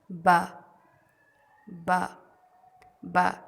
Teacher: ہونٹوں کے گیلے حصے کو مکمل ملانا، لیکن دھیان رہے اندر کی طرف نہیں ملانا اور باریک آواز میں پڑھنا، جیسے با با با.